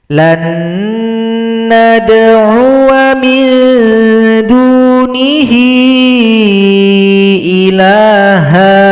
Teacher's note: Di sini ada bulat lingkaran di atas huruf alif, maka ini adalah sifir mustadir, menghilangkan tanda panjang, waw dibaca pendek.